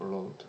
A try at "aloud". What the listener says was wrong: Now you have to stress the A, like aloud.